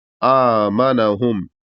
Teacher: حمزہ کے بعد الف ہے تو اس کو ہلکا سا کھینچیں گے ایک الف کے برابر. آمنہم، اس طریقے سے پڑھیں گے.